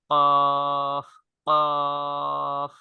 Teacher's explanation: এর উচ্চারণের স্থান হচ্ছে জিহবার গোড়া জিহবার গোড়া তারপর বরাবর উপরের মুখের তালুর সঙ্গে লাগাইয়া